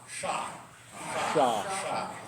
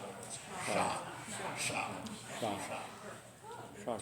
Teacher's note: It's sort of halfway between an S and an SH sound. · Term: Klingon S